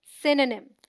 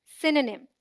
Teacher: SYN sounds like sin, as in win, and is the stressed syllable. The O sound is dropped. NYM sounds like nim, as in him.